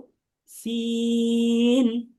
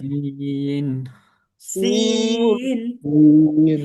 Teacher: নুক্তা মুক্ত সিন হরফটি 3 আলিফ টেনে পড়তে হবে। তার মানে আমরা যখন উচ্চারণ করব তখন আমরা একটু টেনে পড়ব।